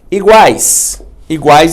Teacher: uma composição de uma semivogal com uma vogal com uma semivogal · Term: tritongo